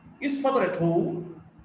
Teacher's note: The stress is on home. The tone is on home. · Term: Rising tone